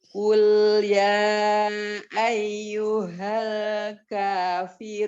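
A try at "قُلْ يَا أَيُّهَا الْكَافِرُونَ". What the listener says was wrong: Iya, tapi tadi itu kurang panjang. Qul ya ayyuhal kafirun. Tinggal ini loh yang ya bertasdid. Sama kayak kita ngucapin Al-Fatihah. Nah, jangan iya.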